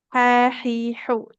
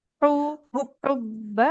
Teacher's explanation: Asyaddu hubba. Huruf H di tengah tenggorokan.